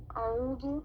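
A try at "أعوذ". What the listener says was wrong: Okay, this is not dhu. It's not a dha. It's a dhal, right? The tongue letters, the dal, the dhal, because you don't want to confuse dhal with dha.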